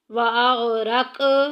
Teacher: قوف کو جھولا دے کے نکالیں گے، لہرا کے نکالیں گے